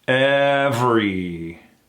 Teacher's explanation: We go right into that VR into that E combination. Very tight.